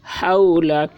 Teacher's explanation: لام کے اوپر زبر ہے، زبر کو جلدی پڑھیں، تھوڑا بھی نہ کھینچیں